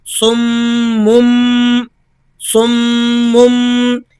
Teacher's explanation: تنوین کی آواز نون کی آواز ہوتی ہے، لیکن یہاں آواز آپ کو میم کی سنائی دے گی. سمم سمم، کیونکہ تنوین کے بعد اگلا حرف با ہے. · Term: اقلاب